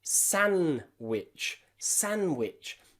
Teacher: they just say sandwich because the D in the middle is silent. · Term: silent D